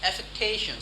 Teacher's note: I'm sounding T as D, bit of an American.